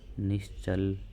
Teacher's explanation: विसर्ग के बाद च आ रहा है तो यहां पर कौन सा स होगा तालव्य स होगा